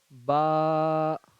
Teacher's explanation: با، یعنی جو دونوں ہونٹ ہے اس کی تری والا جو حصہ ہے، یعنی کہ آپ با کو غور کیجئے پڑھنے میں اور دیکھیے جو دونوں ہونٹ کا کون سا حصہ یہاں پہ سٹ رہا ہے، اور پہلے ہونٹ مل رہا ہے اس کے بعد کھل رہا